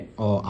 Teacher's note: দেখেছো অ এবং আ উচ্চারণ করার সময় আমাদের কন্ঠ বেশি কাঁপে। এজন্য কন্ঠ থেকে উচ্চারণটি হচ্ছে বলে আমরা ধরে নিচ্ছি।